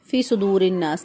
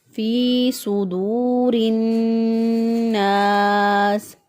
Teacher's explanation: فی ایک الف کے برابر اس کو لمبا کریں گے، فی صدور الناس.